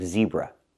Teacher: We have to make the Z sound like zebra with vibration.